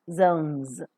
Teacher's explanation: You can pronounce S, which is in the word final position, as Z, because all the sounds that are used are voiced. Z is voiced, O is voiced, N is voiced, so S automatically becomes Z.